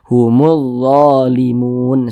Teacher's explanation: huruf lamnya dibaca idgham makanya huruf lamnya ini dia tidak dibaca langsung masuk ke huruf do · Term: alif lam syamsiah, alif lam syamsiyah